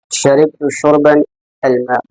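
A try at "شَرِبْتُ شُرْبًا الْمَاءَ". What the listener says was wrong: एराब को जाहिर करो। अलमाउ माआ माई क्या बोल रहे हो? अलमाआ बोलो ना, बोलो मुंह से। हाँ, मुंह से बोलो, एराब जाहिर किया करो।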